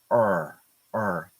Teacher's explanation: When I say the R, it's all the way back.